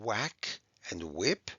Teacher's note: the wh which is confusing because it sounds just like the w is a w sound like we hear in whack and whip